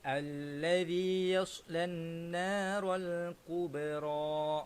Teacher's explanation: Huruf ba ialah huruf qalqalah. Jadi bacaan dia kita kena lantunkan apabila dia mati.